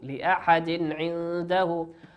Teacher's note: تنوين أتى بعده حرف العين والعين من حروف ماذا؟ من حروف الإظهار نظهره كما هو